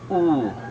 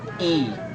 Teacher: First thing we will talk about is the position of our lips. It can be rounded, just like oo. Our lips also can be spread, e.